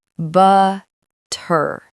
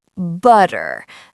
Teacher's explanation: The T sounds like a soft D. This is called a flap T. It makes speech faster and smoother.